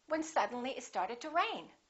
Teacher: rain would be your focus word